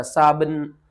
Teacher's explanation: یہاں پر جو ہے نا با، اس کے اوپر آپ نے قلقلہ کرنا ہے اور نون با کے اوپر قلقلہ کر کے نون کے ساتھ ملانا ہے، ٹھیک ہے نا۔